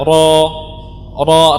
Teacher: tenggorokan bagian belakang lidah kita naikin sehingga suara dia meninggi dan akhirnya menjadi tebal